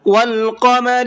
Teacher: والقمر قاف کو پر کر کے پڑھیں گے